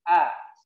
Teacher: Ingat a makhrajnya di ya tenggorokan yang paling bawah. A di bawah zakun kita.